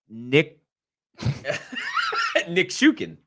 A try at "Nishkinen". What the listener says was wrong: Well, because you said Nishikin. Like you were like hesitant to say it. You just gotta like roll off the tongue.